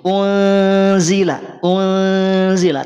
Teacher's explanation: ikhfa yang ausat bisa dipahami nafasnya di hidung atau di mulut ada kadar suara yang masuk ke hidung karena kan ada dengung